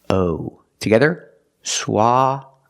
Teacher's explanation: ah sound like stop and hot SWA for the first syllable the second syllable is the long o like know and go